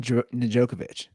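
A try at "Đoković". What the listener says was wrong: The D is silent.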